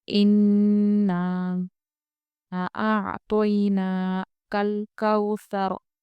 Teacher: نون میں غنہ کریں گے ہم۔ نون کے اوپر جو مد ہے مد منفصل ہے، کیونکہ یہ مد دوسرے کلمے میں ہے۔